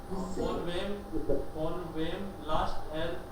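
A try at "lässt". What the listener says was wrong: लास्ट नहीं लेस्ट लेस्ट क्योंकि word तो लास्ट में आएगी ना।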